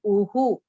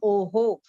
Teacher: The sound of that visarga will be of the previous swar.